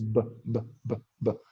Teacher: Usamos los labios, pero también hacemos un sonido vocal. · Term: sonora